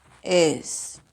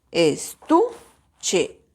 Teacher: Vamos a ejercer la mayor fuerza de voz en tú. Estuche. Aunque no tiene tilde, la mayor fuerza de voz está en tú. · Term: sílaba tónica